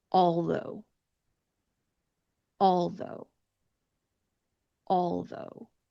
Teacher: my tongue did not come between my teeth on the AL part because it is a dark L, not a light L or a clear L sound. But it did come between my teeth when I made the TH sound for though.